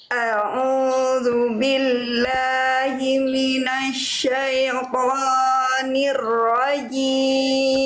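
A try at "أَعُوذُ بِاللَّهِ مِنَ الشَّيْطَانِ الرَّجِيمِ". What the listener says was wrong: Oke, Bunda, huruf to-nya 2 harokat. Jangan minasyaitoni, itu jadi 4 harokat. 2 harokat. A'udzu billahi minasyaitonir rajim.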